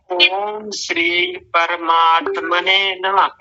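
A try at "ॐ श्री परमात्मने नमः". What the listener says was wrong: नमा, इसी को तो मना किया था, नमा नहीं।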